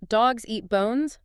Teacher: you have to say the word eat very quickly to be ready for the next bounce on bones. It forces you to feel the rhythm in your body.